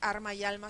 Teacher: vez estos pares mínimos pierden ese valor de Par mínimo porque arma y alma se pronuncian las dos como arma